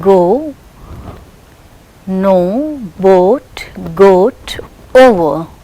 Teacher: This is a glide from a central unrounded vowel between half close and half open to a centralized back rounded vowel just above the half close position.